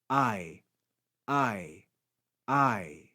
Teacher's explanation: the diphthong so the diphthong a will be read i and you can hear the combination of the two sounds ah and e